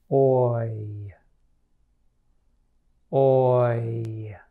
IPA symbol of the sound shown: oɪ